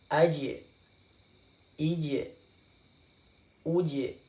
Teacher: Ketika ja sukun itu dipantulkan.